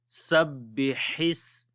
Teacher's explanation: On the ba we make bit strong wise sabbi and ha sound we read from the middle of the throat